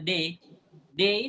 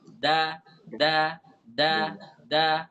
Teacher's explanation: Dal itu jangan kita ucapkan terlalu jauh ke dalam kayak pengucapan kita huruf d biasa